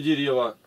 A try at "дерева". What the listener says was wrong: Ты два ударения сделал, и сегодня про дерева, а на последнее.